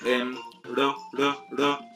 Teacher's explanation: una vibrante simple sería una sola vibración y ya está